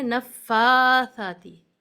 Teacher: نفاثاتی 2 counts تک یا تھوڑا کھینچ کر پڑھنا ہے اس حرف اس لفظ کو. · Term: کھڑا زبر